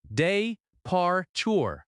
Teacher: The word departure has stress on the second syllable. de-par-ture The r sound in American English is strong.